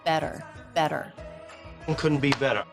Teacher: the TT here is a flap T the tongue just flaps against the roof of the mouth · the tongue bounces against the roof of the mouth then the tip pulls back a little bit so it's not touching anything I always encourage students to hold out the sound before and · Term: flap T into the schwa R